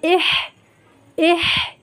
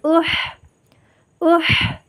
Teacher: হামজা হলকের শুরু থেকে শক্তভাবে আদায় হবে